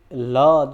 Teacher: इसमें जीवा का अगला भाग ऊपर लगता है, लेकिन कंपाहट इसमें नहीं होती है, जैसे र में होती है इसमें नहीं होती है। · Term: पार्श्विक व्यंजन